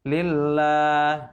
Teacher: La di yang kedua, lamnya adalah hukumnya tabi'i karena dibaca panjang 2 harokat.